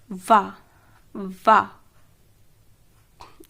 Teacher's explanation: ऊपर के दांत प्लस निचला ओंठ